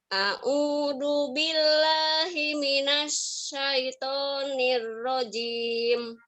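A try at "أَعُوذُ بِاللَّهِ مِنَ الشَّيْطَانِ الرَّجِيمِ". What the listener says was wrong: Ya, a'udzu, zu-nya digigit lidahnya. A'udzu. Ya, a'udzu.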